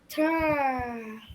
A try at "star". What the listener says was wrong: Yeah, but you don't have to make it long. Star. Just short, but okay.